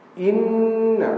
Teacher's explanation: In nun musyaddadah, dengung panjang.